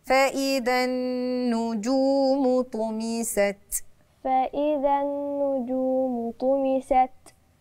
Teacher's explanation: يعني النجوم عندي مد طبيعي الواو احد حروف المد الايه الثه والواو هنا جاي قبلها مضموم تمام ده يبقى مد عندي هنا مد طبيعي حركتين ماطولش قوي زياده